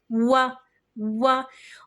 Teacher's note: آگے وہ بحمدک، واؤ کے اوپر زبر ہے، زبر کو منہ کھول کے سامنے کی طرف سے ادا کرتے ہیں، لیکن واؤ کی ادائیگی کے لیے ہونٹوں کو مکمل گول کیا جاتا ہے۔ واؤ ہونٹوں کی مکمل گولائی سے ادا ہوتا ہے۔ کیسے؟ اتنا زیادہ گول کریں گے کہ دونوں ہونٹوں کو اتنا زیادہ گول کریں گے کہ اندر صرف ایک پینسل جانے کی جگہ بچے۔